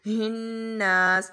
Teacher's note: نون کے اوپر پھر سے غنہ کریں گے اور جہاں پر شد آ رہی ہے اس پر ہم لوگ زور سے پڑھیں گے